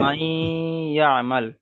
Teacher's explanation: নুন সাকিনের পরে হুরুফে ইউমিনের 4টি অক্ষরের মধ্যে ইয়া এসেছে, তাই নুন সাকিনকে একালিপ পরিমাণ গুণনা করে পড়তে হবে, একে ঈদগামে নাখিস বলে।